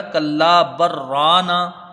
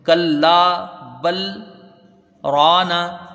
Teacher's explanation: لام کا ادغام را میں ہوتا ہے، ادغام متقاربین ہے. کلا بل رانا یہ سکتہ ہو گیا.